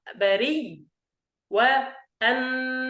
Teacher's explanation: أن نبدل الهمزة ياء وندغم الأولى في الثانية، ثم نشدد للوقف، فنقرأ بري والنسي.